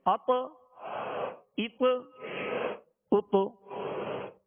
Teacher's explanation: اب اس کو عطا عطا یعنی زبر نہیں دیں گے، اط اط اط، یعنی مخرج میں لگ کر آواز میں جنبش ہوگی، آواز لوٹتی ہوئی آئے گی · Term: قلقلہ